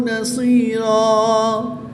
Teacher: 2 زبر کی تنوین کو وقف میں الف مدہ سے تبدیل کر کے پڑھیں گے